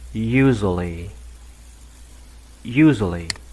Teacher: Trọng âm rơi vào chữ u ạ. Và bạn đọc thành âm u.